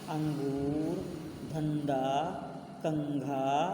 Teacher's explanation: जब हम अनुस्वार का उच्चारण करते हैं तो वायु केवल हमारे नाक से बाहर आती है वह हमारा गला बंद हो जाता है तो इससे वायु नहीं